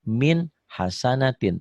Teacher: Cara baca idhar, tulisan dan bacaan sama. Ditulisnya min hasanatin, dibacanya juga min hasanatin tanpa ditahan, tanpa dengung.